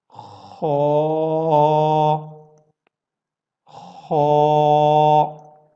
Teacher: خا ایک throttle letter بھی ہے اور ایٹ دا سیم ٹائم یہ موٹے حروف میں سے بھی ہے, بولڈ لیٹرز میں سے بھی یہ ہے.